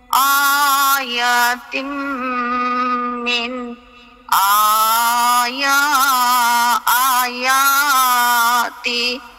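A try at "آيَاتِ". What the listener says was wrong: না, তি বলবেন কেন? আয়াত।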